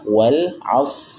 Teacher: Disertai dengan huruf shad yang sukun, dan huruf shad termasuk huruf tebal. Maka angkat pangkal lidah kita